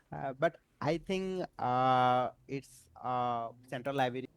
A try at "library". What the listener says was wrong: we hear library, right? A little v instead of a b. We know very common, not always, but quite common with Bangladeshi candidates is that their b sounds like a v and their p sounds like a f.